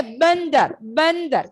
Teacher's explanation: ये धा के पहले अंग आएगा, तो हम इसे न कहकर प्रोनाउंस करेंगे